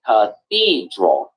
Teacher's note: three syllables and the stress is on number two